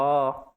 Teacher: कंठ में vibration create हो रही। अर्थात इनका उच्चारण कंठ से होता है। बिना कंठ के इनका उच्चारण ही नहीं पॉसिबल।